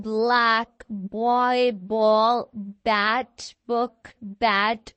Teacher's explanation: Okay, ये ऐसे press होता है, like it's made by pressing the both lips together and releasing with a slight vibration.